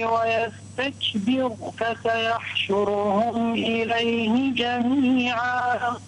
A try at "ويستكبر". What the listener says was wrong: رقق الراء. ويستكبر.